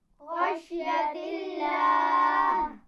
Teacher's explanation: لفظ اللہ کے لام سے پہلے کیا ہے؟ زیر. زیر ہے، اس لیے اس کو ہم نے باریک پڑھا ہے